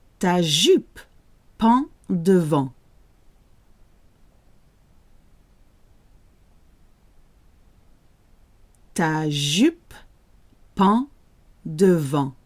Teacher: EN and AN sound exactly the same when they're in the same syllable. So we have the word pend, en, and then devant, en.